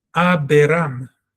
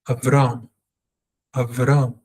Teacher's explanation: We want to take the air sound in Beith, the air sound, and shorten it and pretend it wasn't there because we have a shwa. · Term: silent shva